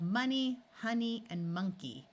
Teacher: the end of longer words usually has a long e sound in these three words the O is going to schah and sound like a short u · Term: schwa